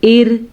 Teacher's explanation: یوم تبلی السرائر، ٹھیک ہے، تبلس، با پہ کلکلا، سرائر، را کے تلفظ کو ہم نے را کو پر پڑھنا ہے اور 5 الف کے برابر اس مد کو کھینچ کے پڑھنا ہے، اور حمزہ کے نیچے زیر آنے کی وجہ سے اور را کو ساکن کرنے کی وجہ سے ہم را کو باریک پڑھیں گے، ایر، ٹھیک ہے۔